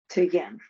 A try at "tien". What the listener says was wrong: In one go, my darling. Stick a t at the beginning of yen.